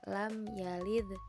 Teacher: Qalqalah sugra adalah huruf qalqalah yang berharakat sukun. Dibaca dengan memantulkan suara, namun pantulannya kecil atau tidak terlalu kuat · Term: qalqalah sugro